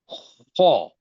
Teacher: خو کو میں نے کیا کر دیا، گول ہونٹ گول کر لیا۔ موٹا کر دیا۔